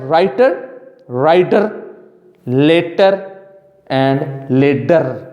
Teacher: Most American speakers produce a flap instead of a T or D in words like writer, rider, later, and later.